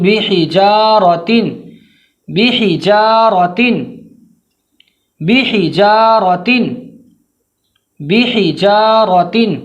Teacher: جیم کے بعد الف ہے، الف مدہ کو کھینچ کے پڑھیں گے واضح طور پر، ہا کی ادائیگی میں دھیان رکھیں گے کہ بیچ حلق سے آواز آنی چاہیے۔ · ہا کی ادائیگی میں دھیان رکھیں گے کہ بیچ حلق سے آواز آنی چاہیے۔ بحجارۃ، را کو پر پڑھیں گے، را کے اوپر زبر ہے، بحجارۃ۔